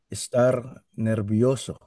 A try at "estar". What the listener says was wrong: O, practice mo yung wag masyadong r sa dulo, ha. Star. Hindi yan ganun. Estar. Estar. Normal lang. Normal.